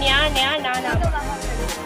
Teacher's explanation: ಮೂಗಿನ ಸಹಾಯದಿಂದ ಉಚ್ಚರಿಸುವ ಅಕ್ಷರಗಳೇ ಅನುನಾಸಿಕ. ಅವುಗಳೆಂದರೆ ನ್ಯಾ, ನ್ಯಾ, ನ, ನ.